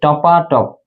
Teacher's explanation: অসমীকরণের উদাহরণ হচ্ছে যেমন টপ টপ, এই যে টপাটপ, এই যে টপ টপ দুইটা স্বরধ্বনি বারবার পুনরাবৃত্তি না করে এখানে মাঝখানে একটা আ ধ্বনি যুক্ত হয়েছে